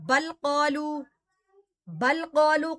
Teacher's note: بل قالو قلقلہ صغرا ہے، یعنی کہ تھوڑا سا قلقلہ ہوگا